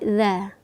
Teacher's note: Huruf za keluar di ujung lidah, ya, menempel ke gigi seri atas. Kita tekan sedikit za.